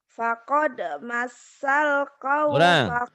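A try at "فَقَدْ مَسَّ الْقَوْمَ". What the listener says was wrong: Kurang nyamber. Fakod masal. Kau Kau mak betul. Jangan kau mak kan ada a-nya. Kau mak.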